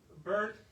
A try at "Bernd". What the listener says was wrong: Slight correction on pronunciation is bar and put an ND at the end. Then you will be just fine.